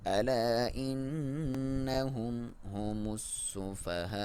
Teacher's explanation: نون پہ شد ہے، غنہ ایک الف کے برابر لمبائی، ہم میم پہ اظہار ہے، مطلب کلیئر اسے پڑھیں گے.